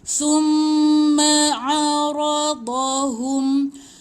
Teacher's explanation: Tahan mim sabdu. Mim sabdu dua harakat, tahan.